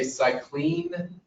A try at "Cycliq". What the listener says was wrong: it's pronounced cyclique with a q at the end c-y-c-l-i-q-u-e